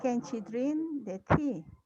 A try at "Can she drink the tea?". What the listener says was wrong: be careful with your intonation when you ask questions.